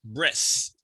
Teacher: I need to hear the th at the end. Breath. It's a voiceless TH.